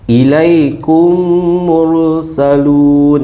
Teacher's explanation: Mim bertemu dengan mim idgham mislain. Dengung juga ya. Dengung dua harakat.